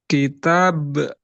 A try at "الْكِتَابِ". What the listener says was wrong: Masih, jadi jangan jangan ada b. Kitab, masih nahan. Jangan ditahan, langsung kol-kolahkan. Kitab, bukan kitab. Jangan, tapi langsung kitab.